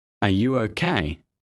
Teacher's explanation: Rising tone for questions. Are you okay? Voice goes up.